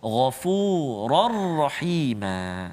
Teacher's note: Jadi tanpa dengung, masukkan terus bunyi tanwin ke dalam huruf ra tanpa dengung.